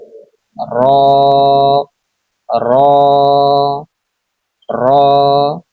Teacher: জিহ্বার আগার পিঠ তার বরাবর উপরে তালুর সঙ্গে লাগিয়ে উচ্চারিত হয় র